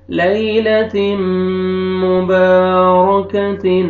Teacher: تنوین کے بعد حروف یرملون میں سے میم ہے، آپ نے ادغام کرنا ہے غنہ کے ساتھ